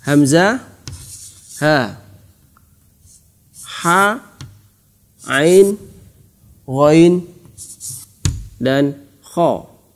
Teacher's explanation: Huruf-huruf ini keluar dari tenggorokan atau bahasa Arabnya adalah halqun. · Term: izhar halqi